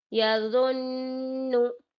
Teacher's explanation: ناک میں تھوڑی دیر آواز کو روکنا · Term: غنہ